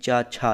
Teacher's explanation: ये चा वर्ग यानी कि तालव्य होता है